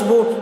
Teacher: پیش کو جلدی پڑھیں تھوڑا بھی نہ کھینچیں معروف پڑھیں مجہول آواز سے بچیں